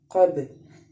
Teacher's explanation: با جو ہے وہ حرف قلقلہ کا حرف ہے، اس لیے ہم اس کو قلقلہ کریں گے۔ قب، قاف، قوف با زبر قب۔